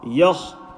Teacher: Ya empty mouth, kha full mouth.